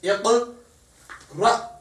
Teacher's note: सो इक़रा, हमजा को झटके से, इधर भी त श, तो हमजा को झटके से पढ़ेंगे हमेशा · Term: हमजा साकिन